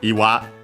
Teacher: the word is iwa, accent on the last syllable